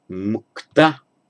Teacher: In Sanskrit it would be muchta, but you can't have chta, has to become a k